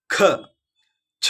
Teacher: ಕ ಚ ಟ ತ ಪ ಹಾಗ ಹಾಗೇನೆ ಪಕ್ಕದ ಸಾಲನ್ನ ನೋಡಿದ್ರೆ ಅದು ಮಹಾಪ್ರಾಣ ಅಂದ್ರೆ ಒತ್ತಿ ಉಚ್ಚರಿಸಲ್ಪಡುವಂತಹ ಅಕ್ಷರಗಳು ಅಲ್ಲಿ ಹೆಚ್ಚು ಗಾಳಿಯನ್ನ ಬಳಸುತ್ತೇವೆ ಮತ್ತು ಒತ್ತಿ ಹೇಳ್ತೇವೆ